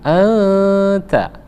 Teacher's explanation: nun mati bertemu dengan ta, ikhfa, jadi disamarkan, dia ditekan selama 2 harokat, lalu kita samarkan anta ya, anta ya, bukan anta tapi anta ya.